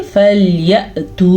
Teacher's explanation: अच्छा जी, फल्यअतू, हमज़ा के ऊपर साकिन आ गया तो यहाँ पे झटके की कैफियत पैदा होगी। कैसे, फल्यअतू, झटका और फिर आगे वाव मद्दा।